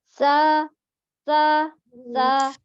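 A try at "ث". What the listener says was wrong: Bukan sa, kurang keluar ujung lidahnya. Sa, ujung lidahnya nampak kan? Masih ke dalam. Masih belum tampak tanya. Harus nampak pergerakan ujung lidahnya menyentuh ujung gigi kita. Jadi harus lebih terbuka ya. Jadi ujung lidahnya harus menyentuh ujung gigi seri atas, menyentuh saja, tidak ditekan.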